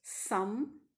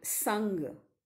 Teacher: is lowered so that the nasal passage of air is opened the lung air escapes through the nostrils freely